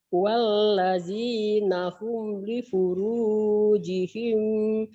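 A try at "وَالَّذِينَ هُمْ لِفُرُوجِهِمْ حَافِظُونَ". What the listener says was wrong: bener, tapi himnya jangan jeda ya Bu ya. Ibu suka ada jeda, jeda itu suka yang ibu baca yang ibu bacakan gini. Walladzina hum li furujihim hafizun. Nah, jangan ada jeda, segera yang ibu tadi bilang nyambung, ya, nyamber. Walladzina hum li furujihim hafizun. Segera ya Bu ya.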